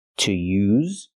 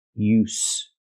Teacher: use with a vibration is the verb, and use with no vibration is the noun